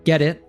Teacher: we have just a glottal T there at the end